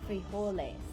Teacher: that J in Spanish is actually going to sound like an H